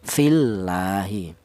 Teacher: lafal Allah ini dial huruf yang berharakat kasrah dibaca tarkik atau tipis